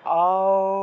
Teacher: এইভাবে একটু টান দিয়ে একটু সময় নিয়ে বলতে হবে ঠিক আছে একটু দীর্ঘ উচ্চারণ হবে ত্রিমাত্রিক উচ্চারণ